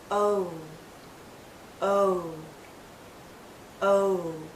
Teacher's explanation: my lips start larger and then pull in to a tighter circle